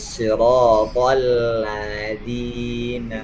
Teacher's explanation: di sini lamnya tidak boleh tebal, tidak boleh terpengaruh huruf to. Tidak boleh bacanya siratal ladzina.